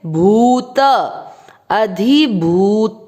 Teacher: भ पे बड़े ऊ की मात्रा लंबा खींचेंगे।